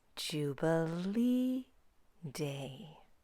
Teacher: The word Jubilee is stressed, but what's really stressed is not the whole word. It's the stressed syllable, Jubilee, the third syllable. So she doesn't do that body movement until she gets to the stressed syllable, Jubilee Day.